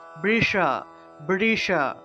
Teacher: অর্থাৎ জিউভা উল্টিয়ে পিছনের দিকে নিতে হবে আমাদের যে জিহভা আছে জিহভাটাকে উল্টিয়ে পিছনের দিকে নিয়ে স উচ্চারণ করতে হবে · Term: মূর্ধন্যস